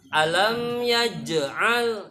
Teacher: jimnya harus ampeg, qalqalah, sugro